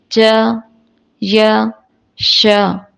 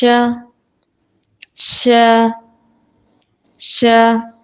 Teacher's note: زبان کا بیچ کا حصہ اوپر کے تالو سے لگائیں گے